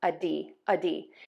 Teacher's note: we have that schwa here, that uh sound. And then we have that long d with that long e vowel at the end.